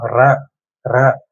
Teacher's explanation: நாக்கோட நுனிப்பகுதி அந்த பல் வரிசையோட அடியில தொட்டுட்டு வரும்